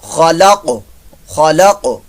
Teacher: لیکن آگے جو ہے وہ دیکھیں یہاں پر وقف آ رہا ہے، جب وقف آ گیا تو اس قاف کو ہم ساکن کریں گے، قاف ساکن ہو گیا تو یہ قلقلہ بن گیا